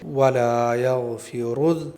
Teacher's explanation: گاف کی آواز ہے یگ اور غین کی آواز ہے یغ، دونوں میں بہت فرق ہے، تو ہمیں غین کے ساتھ میں پڑھنا ہے وَلَا يَغْفِرُ، را پر یہاں پیش ہے تو را کو موٹا کر کے پڑھیں گے